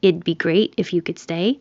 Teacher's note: You don't hear the T at all.